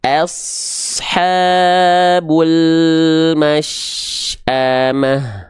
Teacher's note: melafalkan huruf shin terus mengalir, khususnya ketika shin dalam kondisi sukun. Sekali lagi, banyak orang melafalkan ini terputus, khususnya ketika baca Quran dengan tempo yang lambat.